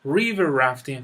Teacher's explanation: استرس روی river قرار میگیره